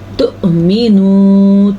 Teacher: حمزہ کے اوپر ساکن ہونے کی وجہ سے یہاں پہ جھٹکے کی چھوٹی سی کیفیت بنے گی